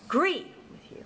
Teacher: in the word agree, for example, there are two syllables, and the stress falls on the second syllable. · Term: weak stress, strong stress